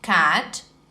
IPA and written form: kæt (cat)